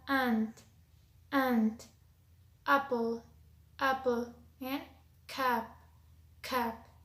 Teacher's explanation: The next one is ah. This is a short sound and its horizontal position is front and its vertical position is low.